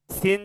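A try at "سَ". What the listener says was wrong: শিন না ভাই, শিন শোনা যাচ্ছে, শিন না সিন চিকন। সিন জবর সা, এটাই এটাই আমরা পড়ছি।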